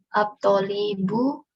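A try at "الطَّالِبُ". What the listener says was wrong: At-talibu. Taknya yang panjang.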